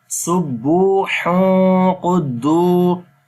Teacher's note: So after the tanween, the next letter is qaf, which is one of the ikhfa letter. So we make ikhfa sound, like we hide the sound of noon into our nose.